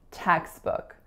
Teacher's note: textbook only has two syllables and both of the vowel sounds are laxed